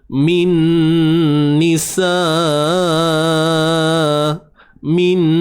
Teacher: nun mati bertemu nun, idgham bi gunnah, masukkan nun ke dalam nun.